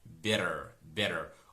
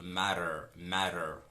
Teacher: Here t is realized or is pronounced as a flapped t, better, better.